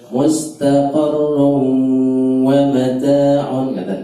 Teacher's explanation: tanwin ketemu wawu, dia idgham, maka dia didengungkan. Mustaqarrun wa mata'un, bukan sekedar mustaqarrun wa mata'un.